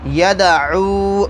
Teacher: یہ زبان جو ہے یہ سامنے کے 2 دانتوں کے جڑوں میں جہاں سے دانت نکلے وہاں لگیں گی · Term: حروف قلقلہ